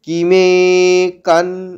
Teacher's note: অনস্বরটা দন্ত নয়ে হসন, মানে অর্ধেক দন্ত নয়ের মতো শোনা হবে